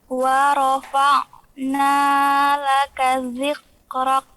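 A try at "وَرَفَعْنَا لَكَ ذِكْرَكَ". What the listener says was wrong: Nah, bukan dhiq. Zik. Angin. Zik.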